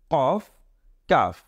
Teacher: কাফের উচ্চারণ কিন্তু আমাদের গলার ভিতর থেকে আসবে সেটাও কিন্তু একটু চাপ দিয়ে হবে